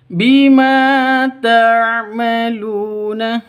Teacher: Lu panjang dua ketukan sama ya mad asli atau mad tabi'i. Kenapa? Karena ada waw mati di sini, waw sukun atau waw mati diawali dengan dhammah atau waw mati di sebelumnya berharokat dhammah, seperti itu.